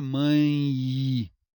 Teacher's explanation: a letra E, na realidade tem um som de iode, som semivocálico, o som de I